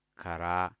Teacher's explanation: So I stay short on ka and longer on ra.